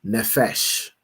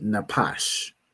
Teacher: Here, pronounce the word as nefesh, because the Jewish man pronounced his pa as a fa, as an F,